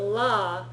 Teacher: La is like at the Joint of where your teeth meet your gums on the top it's like either where they join or just a little bit · your tongue is really up against your teeth right your your top teeth da it's a lot further back